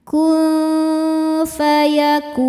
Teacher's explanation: Karena nun sukun bertemu dengan huruf fa. Cara bacanya nun ini disamarkan ke fa kemudian dengungkan. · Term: ikhfa hakiki ausat